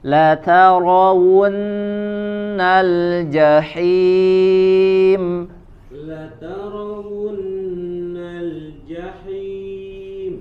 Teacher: Nah, kemudian ra-nya tebalkan.